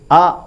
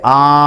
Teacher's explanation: హల్లులు గాని అచ్చులు గాని పలుతాలు ఇవి ఎలా పలకాలి అన్నప్పుడు అ ఉందనుకోండి ఒక చిటిక మాత్ర కాలంలో పలకాలి ఒక చిటికెలో అయిపోవాలి అదే ఆ అని దీర్ఘం తీస్తే రెండు చిటికెల మందంలో అది పూర్తి అయిపోవాలట